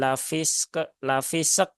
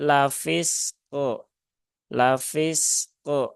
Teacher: Jadi tunaikan dulu rakhaah dari huruf Sin setelah itu syiddah dan Qalqalah dari huruf qof · ketika waqaf e maka qnya harus di ee qolqalahkan